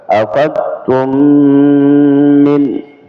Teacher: Nah, di sini mim ketemu mim ya, idgham ya, yang sering kita sebutkan idgham mimi. Ya. Jadi berdengung ya, dengungnya sama dua harakat